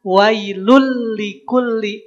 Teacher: Maka yang awalnya lun leburkan ke huruf lam jadi wailul. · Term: idgham